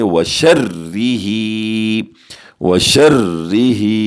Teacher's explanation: ہا کے نیچے کھڑی زیر ہم اسے کھینچ کر 2 سیکنڈ تک پڑھیں گے